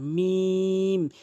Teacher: 2 ঠোঁটের ভেজা অংশ মিলিত করে উচ্চারণ করতে হবে, মিম এভাবে টেনে উচ্চারণ করবেন, মিম।